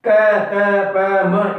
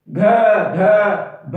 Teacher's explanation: घ ध भ इस टाइप की जो भारी ध्वनियां हैं, ख, इनमें क्या होती है, हमारी जो प्राण वायु है वो ज्यादा लगती है, थोड़ा भारीपन होता है, इसीलिए हमने क्या कहा है, महाप्राण कहा है।